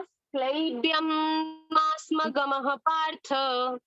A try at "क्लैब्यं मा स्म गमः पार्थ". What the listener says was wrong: क्ले नहीं है, क्लै, क्लैब्यम।